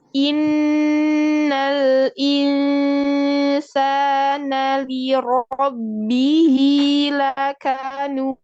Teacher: nun tasydid, gunnahnya ditambah lagi waktunya